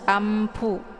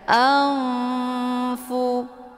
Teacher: Hukum bacaan ikhfa awsat dibacanya juga sambil didengungkan.